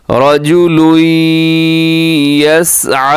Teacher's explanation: यहाँ पे रा मोटा है और आगे इदगाम हो रहा है गुन्ने के साथ।